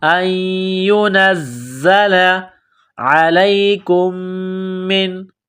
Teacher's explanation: عین گلے کے درمیان سے زور لگا کر عین کو نکالیں گے، لام کو یا کے ساتھ ملانا ہے۔